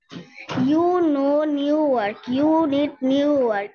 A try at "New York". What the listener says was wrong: না, ইয়র্ক ইয়র্ক, নিউ ইয়র্ক, নিউ ইয়র্ক। আরের উচ্চারণ করো না, নিউ নিউ ইয়র্ক, নিউ ইয়র্ক।